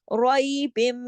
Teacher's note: با دو زیر بن کی آواز آگے میم کے اندر ضم ہو گئی نا، روئی بم، اور ساتھ غنہ بھی ہو رہا ہے بم، یہ جو آواز ہے یہ ہے غنہ، ٹھیک ہے؟ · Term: ادغام